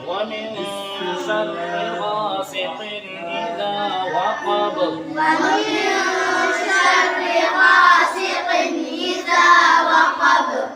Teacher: اذا وقب میں اذا کو کتنا کھینچیں گے؟ ایک الف کے برابر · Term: الف مدہ